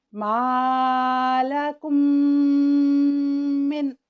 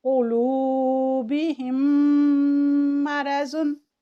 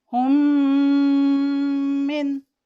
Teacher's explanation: ادغام شفوی اور اخفاء شفوی میں یہ فرق ہے کہ اخفاء میں ہم آرام سے ناک کی جڑ کی طرف سے آواز میم ساکن کی لاتے ہیں، لیکن ادغام میں ہم ادغام شفوی میں ادغام بھی کرتے ہیں، یعنی اس کو مضبوطی سے ملاتے بھی ہیں اور اس کے ساتھ ساتھ ہم خیشوم سے بھی ادا کرتے ہیں۔ آئیے ہم اس کی مثال دیکھتے ہیں، جیسے کہ ہے مالکم پلس من، تو اس کو ہم پڑھیں گے مالکم من۔